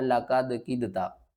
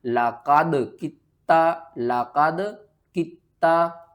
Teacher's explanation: काफ को हमने क्या करना है? ता के साथ मिलाना है, दरमियान वाला जो दाल है इसको आपने छोड़ देना।